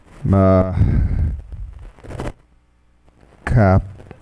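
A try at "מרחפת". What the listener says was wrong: No, it's a resh. Ma ra. accented. Ma ra chefet.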